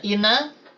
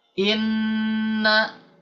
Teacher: sedangkan ketika nun ditambah tanda tasdid, maka dia harus ada dengungan. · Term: gunnah